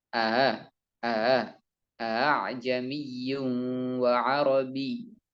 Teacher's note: Maka untuk memudahkan pengucapannya, mereka membaca hamzah kedua dengan pengucapan antara hamzah asli dengan alif yang itu huruf mad menjadi a a a'jamiyyun wa arabi ya.